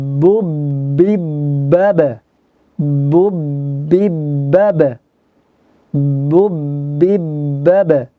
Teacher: jaharnya, syiddahnya maksudnya. Jelas, tidak disamarkan seperti huruf P.